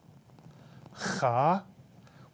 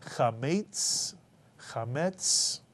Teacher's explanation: the chet, the slight clearing of the throat